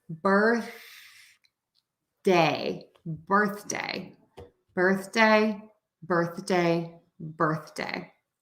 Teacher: the day becomes shorter because birth is the main part of the word that's a compound noun and so we're going to stress word